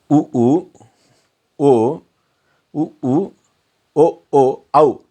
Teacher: உ ஓ அவ் இந்த ஐந்தும் இதழ் குவிவதால் உதடுகள் குவிதால் பிறக்கக்கூடியது